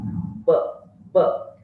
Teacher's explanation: Two lips are close to each other. Two articulators are close to each other, but these two articulators go away or separate from each other very suddenly. · In case of B, upper lip and lower lip are the active and passive articulators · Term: bilabial